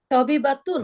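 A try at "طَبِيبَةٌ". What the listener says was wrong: তবিবাতুন, একটা মাদ আছে, দেখেন তবিবাতুন।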